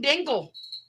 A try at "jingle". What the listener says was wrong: Jingle, jingle, not dingle.